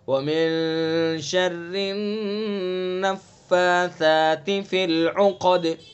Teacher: فِي الْعُقَدِ، قاف کو پر، دال کے اندر قلقلہ